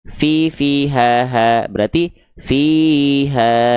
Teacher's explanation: dibaca dengan kadar panjang dua harakat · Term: mad thobi'i